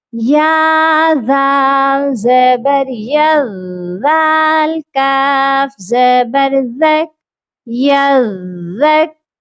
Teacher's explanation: second word میں ذال soft letter ہے، اس کو ہم نے نرمی سے تو پڑھنا ہے، لیکن مشدد ہونے کی وجہ سے مضبوطی بھی ہونا چاہیے اس کے پڑھنے میں